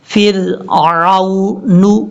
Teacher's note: عین کو واو سے کنیکٹ کرتے ہوئے لمبا نہیں کریں گے